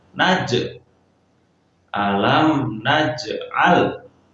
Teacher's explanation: Jadi huruf jim yang sukun karena itu huruf qalqalah, maka kita harus pantulkan.